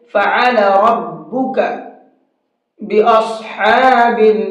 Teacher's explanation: حلق سے نکلے گا، یہاں سے بیچ حلق سے نکلتا ہے عین